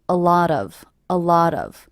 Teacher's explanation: I hear these three words as one unit a lot of a lot of with the stress happening on the middle word